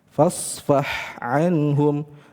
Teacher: dua huruf ini adalah huruf yang keluar dari tengah tenggorokan ya, huruf ha dan huruf ain. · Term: mutajanisain